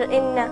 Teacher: الخيشوم تخرج منها الغنة، غنة النون تخرج من الخيشوم